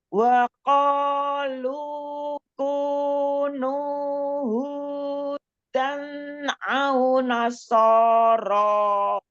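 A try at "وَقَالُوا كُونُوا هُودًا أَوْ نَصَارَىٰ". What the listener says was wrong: Huruf dal majukan lagi ya. Hudan au nasara Nah, monyongin lagi ketika dhammah dengan waw.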